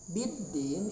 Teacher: Biddin itu alif lam syamsiyah, yang mana alif lamnya tidak terbaca dengan jelas, seakan-akan tidak ada.